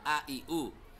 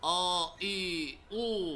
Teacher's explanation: Kalau a i u tipis kan a i u. Tapi kalau a i u tebel kan o i u. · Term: tipis sama tebal